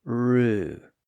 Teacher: notice how little movement there is between the initial R sound and the U vowel sound that follows it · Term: approximant